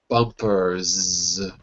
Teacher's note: voiced ER to the voic S it's too physically difficult because your throat's already vibrating so you're forced to add the voice to S which sounds like a z